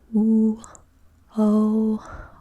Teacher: oo, o are rounded vowels, but they take place in the back of the mouth or the back of the oral cavity where the tongue root is pushed towards the back.